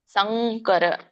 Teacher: ಕ ವರ್ಗ ಬರುತ್ತೆ, ಕ ವರ್ಗ ಅನುನಾಸಿಕ ಏನು? ಂಗ್. ಹಾಗಾಗಿ ಇಲ್ಲಿ ಂಗ್ ಬರೆದು ಕೆಳಗಡೆ ಕ ಕೊಟ್ಟಿದ್ದಾರೆ, ಸಂಕರ.